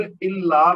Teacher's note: لام مشدد ہے، زور دے کر پڑھا جائے گا، اور لام کے بعد الف مد ہے، اور اس کو پھر دو حرکت تک کھینچ کر پڑھیں گے